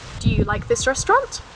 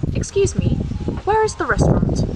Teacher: the end will but with open questions it is the opposite on the final word the intonation will go down